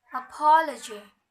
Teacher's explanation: the pattern unstressed primary unstressed unstressed